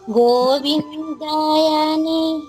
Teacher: య హర్రస్వాక్షరమే దీర్ఘం రాకూడదు